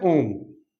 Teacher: तो ओम का उच्चारण करने में इन ए आ की तुलना में अपन को ज्यादा समय लगता है, 3 गुना समय लगता है।